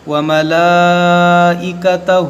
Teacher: کھڑا زبر الف مدہ ہے اور اس کے بعد حمزہ اسی کلمے میں ہے تو یہاں مد متصل ہوگا